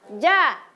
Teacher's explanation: Huruf jim itu cara mengucapkannya dia dekat sekali dengan langit-langit, langit-langit di atas. Ja, lidahnya tengah lidahnya dekat sekali dengan langit-langit di atas.